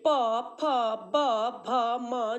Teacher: लीप यानी ठो होठ होठ देखिए प फ ब भ म जब हम उच्चारण कर रहे हैं तब ये होट से हो रहा है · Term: प वर्ग